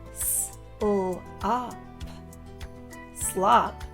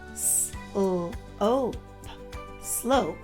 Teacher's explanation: It is only there to work its magic on the O, turning the ah sound we usually make into the O sound. So instead of slop, slop, it will say slope, slope, because of the magic E.